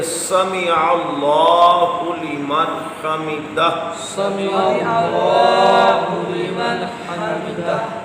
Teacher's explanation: اللہ کا جو ہا ہے حلق کے نچلے حصے سے ہے